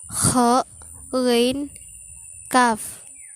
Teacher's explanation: Konsonan velar adalah bunyi yang keluar lewat pangkal lidah dan belakang pangkal langit-langit